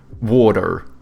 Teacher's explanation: Americans, they have like soft T's and then they pronounce their R's, so they go like water, you know?